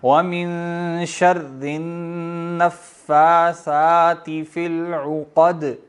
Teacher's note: اور دال اب ساکن آپ پڑھ رہے ہیں آیت پہ وقت کی وجہ سے تو دال پہ قلقلہ ہوگا, آواز ٹکرائے گی